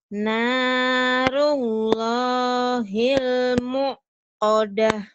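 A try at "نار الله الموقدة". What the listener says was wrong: narullahil jangan ditekan ini mah, kan gak ada hamzahnya. Yang ada hamzah di atas baru ditekan. Ini jangan ditekan. Narullahil muqadah. Jadi panjang ya. Matobi kan.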